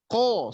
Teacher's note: ketika mengucapkan ko, dasarnya lidah itu, pangkal lidah, kemudian dengan langit-langit yang terjauh juga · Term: Qaf